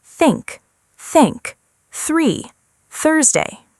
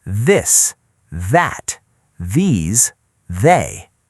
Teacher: Some th sounds are softer and quieter, while others have a gentle voice behind them.